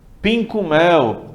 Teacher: muito próprio do mineiro ele juntar ele emendar ele fazer essa solda das palavras